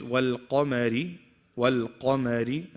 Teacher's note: Qaf is heavy, mim is light.